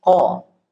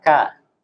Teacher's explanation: huruf kof itu nggak boleh keluar udara